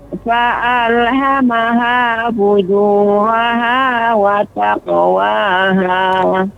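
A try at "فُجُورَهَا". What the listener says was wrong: Jadi ra-nya lebih ditebalkan Ibu. Fujuraha, dan ketika qalqalah pada huruf qaf, wa taqwaha.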